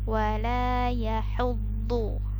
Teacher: Ini huruf ha-nya di tengah tenggorokan. Kemudian juga huruf dhu-nya di sini tebal ya.